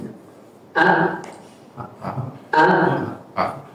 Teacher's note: huruf hamzah memiliki lawan dari sifat al-hams, yaitu sifat al-jahr, atau suara jelas yang lahir dikarenakan tertahannya nafas ketika mengucapkan huruf tersebut